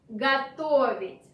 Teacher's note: Pay attention that O after ge is not stressed. This is why we pronounce it like a.